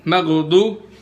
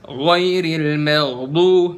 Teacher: huruf ghain itu nggak mantul pada saat dia sukun.